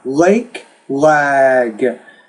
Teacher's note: Now, one thing you have to be careful about is these words, when you have the K or the G, the K is a voiceless consonant, the G is a voiced consonant.